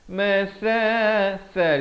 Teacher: hujung lidah keluar di antara dua gigi itu